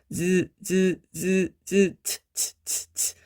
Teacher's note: 약간 과도기적인 그런 특징을 갖고 있습니다. 그래서 츠 마찰되는 것 같으면서도 막혔다가 터지는 소리. 파열의 특징, 두 가지 특징을 다 가지고 있다라고 보시면 좋을 것 같아요.